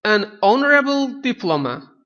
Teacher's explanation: Honorable sözü h hərfi ilə, yəni h samiti ilə yazılışda başladığına baxmayaraq burada h səsi yoxdur. Ona görə də biz an honorable diploma deyə bilərik və ikinci bəndimizdə verilən birləşmə doğrudur.